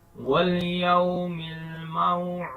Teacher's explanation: دال پر قلقلہ کریں گے